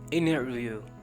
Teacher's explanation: लेकिन कोशिश कीजिए कि नाक से टी की आवाज़ आए, जहाँ से आपने एन को प्रोनाउंस किया वहीं से टी को प्रोनाउंस कीजिए